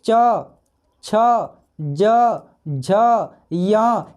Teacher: ये सब हमारे तालु से बोला जा रहा है।